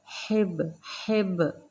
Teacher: با پر جزم قلقلہ کریں گے باریکی سے